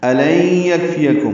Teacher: الن یکفیکم حمزہ اقصی حلق سے ادا کریں گے، لین میں نون ساکن کے بعد یعنی کی وجہ سے ادغام ہے، یہ ادغام ناقص ہے، غنہ ہوگا۔